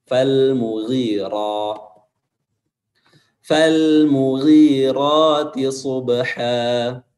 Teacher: Ra di sini dia dibaca tafkhim atau tebal karena berharokat fathah.